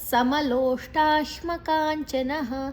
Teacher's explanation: ನ ಆದ ನಂತರ ವಿಸರ್ಗದ ಉಚ್ಚಾರಣೆ ಹ.